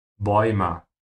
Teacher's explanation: pronouncing the A with umlaut and the U after it, oi.